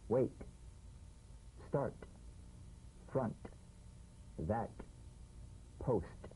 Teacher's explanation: The same staccato springing action as the D drum beat, with no voice, forms the light tap of the T. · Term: unvoiced T